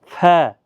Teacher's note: جہاں تک ہونٹ تر ہوتے ہیں، جو تری والا حصہ ہوتا ہے اور ثنائے علیہ کے کنارے وہاں پر ٹچ کر کے ف ادا ہوتا ہے، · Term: حروف شفیہ